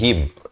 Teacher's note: Beza him dengan him. Ha berkasrah bunyi hi, bukan he. Bila bertemu mim jadi him.